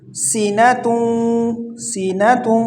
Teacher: سین میں سیٹی کی آواز نکالیں گے